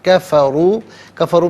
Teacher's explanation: کفروا میں را پر پیش ہے، را کو پر کر کے پڑھا جائے گا